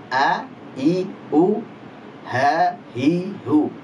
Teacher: Dari tenggorokan paling jauh, yaitu tenggorokan paling bawah, itu adalah huruf hamzah dan juga ha. A, I, U, ha, hi, hu.